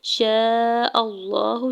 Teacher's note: شین کے اوپر زبر ساتھ الف اٹیچ ہے، اس کے اوپر مد متصل ہے، 4 سے 5 حرکت کھینچ کے ادا کریں گے ، حمزہ کے زبر کو لام جلالہ کے ساتھ ملاتے ہوئے